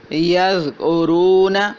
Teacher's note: ذال جس کی آواز ہے زا، باریک اور نرم